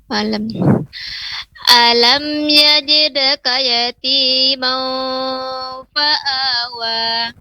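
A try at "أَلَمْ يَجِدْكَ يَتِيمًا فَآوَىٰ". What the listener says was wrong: Salah, kalau kita langsung memasukkan kepada tanwin setelahnya fa, jangan mau, tapi buka dulu mimnya. Ma. Yajidka yatima. Juga ketika dalnya maka ditipiskan karena huruf tipis. Yajidka yatimam.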